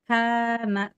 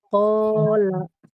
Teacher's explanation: Ketika sesudah K ada alif, dia alifnya terbawa tipis oleh kaf. Karena kaf huruf tipis, tarkik, yang istifal, maka si alifnya jadi tipis. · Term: alif yang dibaca tipis